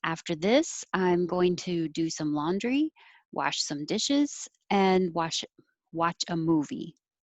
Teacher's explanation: an example of going up at the end if you're not done, and then going down when you are done.